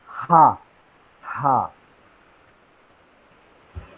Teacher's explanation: Then glottal fricative. I mean the air directly passes and there is no blockage created usually. Only there the vocal tract is narrowed down a bit